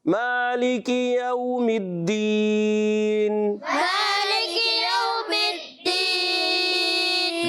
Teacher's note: واو ساکن سے پہلے زبر ہے, واولین ہے, نرمی سے ادا کریں گے, سختی نہیں کرنا, کھینچنا نہیں ہے